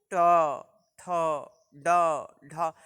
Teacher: हमारी जीवा आगे जाती है, थोड़ा सा मुड़ती है और स्पर्श करती है। जहाँ यह मुड़ती है और जहाँ हमारी जीवा स्पर्श करती है उसको जो है वह मूर्धा कहा जाता है।